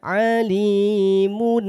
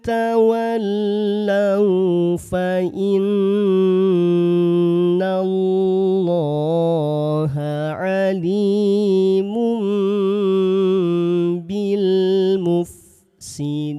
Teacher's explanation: Mengganti bunyi n pada tanwin dengan bunyi m, ya. Jadi, jangan dibaca alimun. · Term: iqlab